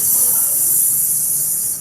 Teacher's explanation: the air is creating this audible friction in it